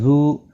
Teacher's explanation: ذو واو مدہ ہے، ایک الف کی مقدار کے برابر کھینچ کر پڑھیں گے۔